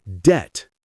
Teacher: But the B is silent, so we just say debt.